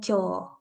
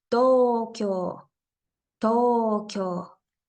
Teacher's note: podemos crear un sonido largo de la O utilizando primero la vocal o y luego la u